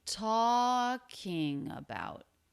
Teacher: the pitch falls down because the peak of pitch for this phrase was the stressed syllable of talking